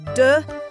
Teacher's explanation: And I only say duh. The k sound totally gone.